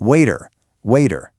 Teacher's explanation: T often gets softened into something that sounds way more like a D. So you get waiter.